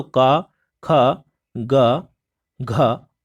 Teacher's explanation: आपके कंठ व्यंजन हो जाएंगे, जो कंठ के द्वारा जिनका उच्चारण होता है।